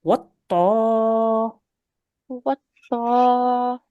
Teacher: Now here you do need to elongate because you've got an alif mother there.